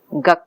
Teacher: the later occurring velar sound ka is influencing the first sound. Okay, instead of saying the, which requires moving the place of articulation, the child is staying with velar articulation. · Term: assimilation